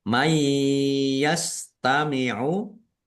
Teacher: nun sukun bertemu dengan huruf ya. Bacaan idgham bighunah masuk dengan mendengung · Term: idgham bi gunnah